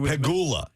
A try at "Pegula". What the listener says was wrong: No, you're you're very much emphasizing the peg.